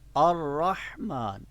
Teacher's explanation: را کو ہم جنبش نہیں دیں گے، را کو جنبش نہیں دیں گے، ہلائیں گے نہیں، را کے حرف کو ہلائیں گے نہیں ہرگز